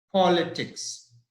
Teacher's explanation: the word stress is on the first part